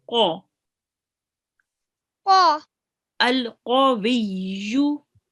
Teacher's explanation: what The qaf is colored red. So it means that it's a thick letter. It will be pronounced with your mouth rounded a bit.